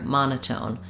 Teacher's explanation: Tone is shorter than ma because ma is the main stress, and tone just has stress because it keeps that clear vowel. But because it has the clear vowel and it has secondary stress, we use a true T here